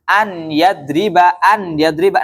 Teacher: Nun sukunnya tidak dibaca ya melebur ya langsung masuk ke ynya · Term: Idam